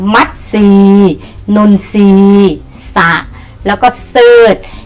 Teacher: ออกเสียงตัวทรเป็นซอโซ่และออกเสียงพยัญชนะตัวหน้าเพียงตัวเดียว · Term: คําควบกล้ําไม่แท้